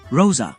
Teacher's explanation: O som fricativo alveolar sonoro do S